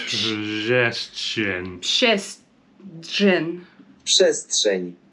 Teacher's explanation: So the R, if there's P-R-Z, the R is not pronounced.